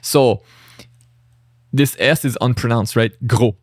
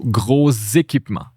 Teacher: So the unpronounced S, since it's followed by a vowel here, now we pronounce it. But since the S is in between two vowels, it's a Z sound.